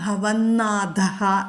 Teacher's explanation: നാഥയിലെ നാ തവർഗത്തിലെ അനുനാസികമാണ്